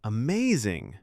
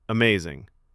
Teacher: Rising pitch, soft smile, genuine praise. Amazing. Flat, quick, no smile.